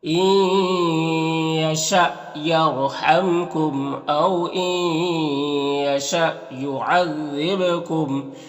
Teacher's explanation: یہاں پر واو ساکن سے پہلے الف کے اوپر زبر تو واو لین ہوگا، اسے نرم آواز کے ساتھ جلد پڑھیں گے · یہاں پر ادغام ناقص ہوگا اور یہاں پر حمزہ ساکنہ ہے تو جھٹکا لگے گا اور دال کو باریک پڑھیں گے۔ با حروف قلقلہ میں سے ہے تو با میں قلقلہ ہوگا